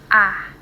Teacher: vokal rendah, seperti bunyi A dengan posisi lidah di bawah, mulut terbuka lebar.